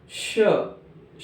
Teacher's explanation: इनके उच्चारण में वायु घर्षण करते हुए मुख से बाहर निकलती है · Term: उष्म व्यंजन